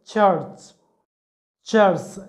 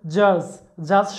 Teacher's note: উচ্চারণের সময় একাধিক ম্যানার অফ আর্টিকুলেশন কাজ করে একসঙ্গে কাজ করে প্রথমত সম্পূর্ণরূপে কোথাও এয়ার ফ্লোটা মানে বায়ুটা বন্ধ হয়ে যায় তারপরে শেষে স্লো হয়ে মানে ধীরে ধীরে সেটাকে রিলিজ করে দেওয়া হয় তখন আবার ফ্রিকেটিভসের মতো ঘর্ষণ সৃষ্টি হয় স্পিচ অর্গানের সাথে ঘর্ষণ সৃষ্টি হয় তো এইরকম অ্যাপ্লিকেটস হচ্ছে ইংলিশে